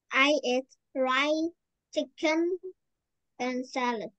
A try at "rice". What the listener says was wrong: It's not rye, it's rice. Rice. Rice.